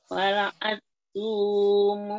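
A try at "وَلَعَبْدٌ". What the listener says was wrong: Apa? Ada ba di kokolan ya. Wala'abdum. Wala'abdum.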